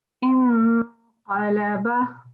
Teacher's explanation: the noon sakin will be given a gunna sound. So you have to hide the noon sound. So not a clear in sound. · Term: noon gunna sound